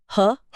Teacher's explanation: ह की ध्वनि सीधे कंठ के भीतर से काकल्य से आती है। इसलिए इसे काकल्य व्यंजन कहते हैं।